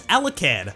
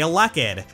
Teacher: stressing the second syllable instead of the first